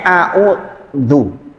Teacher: Jadi bersentuhan dengan gigi seri, keluar sedikit lidahnya. Enggak melet, enggak keluar banyak